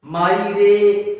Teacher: रे में ए स्वर का उच्चारण जो होता है काफी देर तक होता है, इस कारण हम इसे क्या कहते हैं, प्लुत स्वर कहते हैं।